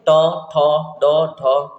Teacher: ड तक पढ़ते हैं ट से लेके ड़ तक ठीक है तब आपका जो जीभ है वो मुर्धन्य पे आके टच होता है